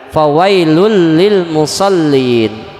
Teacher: memasukkannya nun mati bunyi nun mati atau tanwin ketika berhadapan dengan huruf lam dan ro tidak disertai dengan guna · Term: idgham bilagunnah